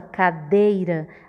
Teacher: a gente bota mais força na letra e do que na letra i por isso é aí é a vogal e ue é a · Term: semivogal